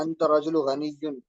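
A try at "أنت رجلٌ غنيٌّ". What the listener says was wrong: الف لام داخل نہ ہو تو تنوین پڑھا جائے گا نا. تو رجل کیوں پڑھ رہا ہے؟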